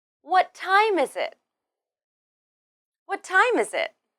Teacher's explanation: In this question, we stress what and time. Then, use a falling intonation at the end.